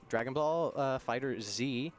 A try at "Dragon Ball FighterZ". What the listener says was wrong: It's neither. It's just Dragon Ball Fighters. Dragon Ball Fighters. The Z is not pronounced.